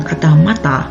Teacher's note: udara dihentikan di belakang gigi atas oleh ujung lidah kemudian dilepaskan · ada empat huruf yaitu m a t dan a untuk m udara diarahkan melalui hidung dengan bibir tertutup